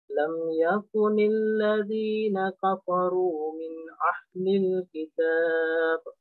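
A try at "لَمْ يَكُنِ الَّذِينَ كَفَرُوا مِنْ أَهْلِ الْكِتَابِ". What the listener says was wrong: Sisa ini nanti jangan kita bilang min ahli. Ini bukan ah. Hurufnya ini salah. Jadi min ahli.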